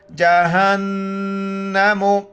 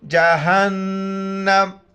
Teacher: نون پر چونکہ شد ہے نون پر غنہ کریں گے، ناک میں آواز چھپائیں گے